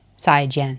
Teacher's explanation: Both of them falling tone.